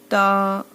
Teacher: जबान की नोक और सामने के ऊपर के दो दांतों की जड़